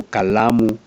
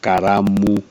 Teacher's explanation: Kikuyus have a problem with L so they usually substitute with R